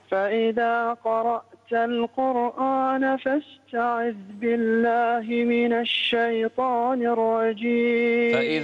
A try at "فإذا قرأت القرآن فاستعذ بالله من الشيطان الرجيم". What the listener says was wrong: فإذا قرأت القرآن لا تفخم قرآن لا. فإذا قرأت القرآن فاستعذ بالله من الشيطان الرجيم.